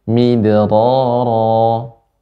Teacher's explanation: ro-nya dibaca dengan lembut, getarannya lebih sedikit